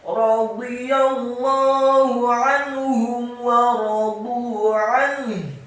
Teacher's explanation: nun yang sukun bertemu dengan ha. Hukum bacanya adalah ilhar, dan ha-nya dibaca sukun dan tafkhim, dibaca tebal. · Ainnya ditekankan, kata an ditekankan fathah satu harokat, nun yang sukun bertemu dengan ha.